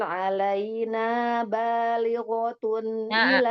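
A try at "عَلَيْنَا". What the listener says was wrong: Alaina. Nah, jangan ditekan. Alaina. Biasa saja.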